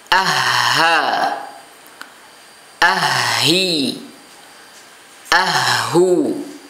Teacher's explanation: Jadi ha keluar dari pangkal tenggorokan. Jadi tidak terlalu dalam, ya, tidak terlalu dalam ha misalnya, tidak, tapi keluar dari pangkal tenggorokan sebagaimana hamzah.